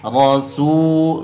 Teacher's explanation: huruf ro berbaris fathah dibaca tebal